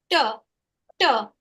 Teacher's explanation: my tongue makes contact with the roof of the mouth, with the alveolar ridge just behind the teeth.